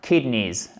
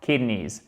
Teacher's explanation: Les reins, kidneys, accent tonique sur la first part, première syllabe